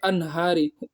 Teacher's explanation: اظہار کا مطلب ہوتا ہے نون کی آواز کو صاف صاف پڑھنا، غنہ نہیں کرنا ہے وہاں پر